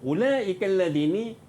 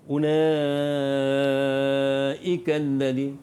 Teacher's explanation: Mad wajib muttasil. Panjangnya 5 harakat. Ulaikal ladini tak ada pilihan, memang kena 5 harakat.